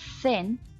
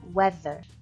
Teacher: th is pronounced differently in thin than in weather. The difference is one of voicing. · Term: interdental fricative